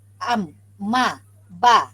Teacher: Sama-sama keluar daripada 2 bibir apabila kita sebut am, ma, ba. Jadi dia melibatkan 2 bibir. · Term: makhraj syafawi